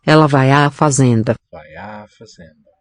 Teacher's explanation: It's really two vowels. It's a sequence a. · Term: fusion